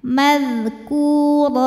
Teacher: Kemudian apabila berhenti ra karena barisnya tanwin fathah, maka hukumnya adalah mad iwad sebab ada harokat tanwin fathah yang kita wakofkan atau kita berhentikan. Cara bacanya dipanjangkan 2 harokat tanpa bunyi n.